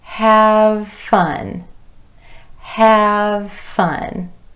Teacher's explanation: the V sound and F sounds, both made with the top teeth resting against the bottom lip. So have fun becomes have fun.